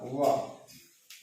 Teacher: व का जो उच्चारण है दांत और ओठ से होता है